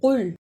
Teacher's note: اسے کل نہیں پڑھنا، قاف کو موٹا پڑھنا ہے